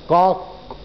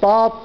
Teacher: حرف يطلع مفخم باستعلاء جزء من اللسان، يعني ارتفاع جزء من اللسان إلى جهة أعلى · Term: تفخيم الحرف